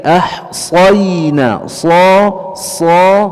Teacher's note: huruf sa tebal dengan isti'la dan itbaq, ya, dengan isti'la dan itbaq tidak dibaca ahsayna tapi ahsayna, sa, ya, dan seterusnya.